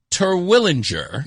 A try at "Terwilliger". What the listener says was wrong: No N, Terwilliger.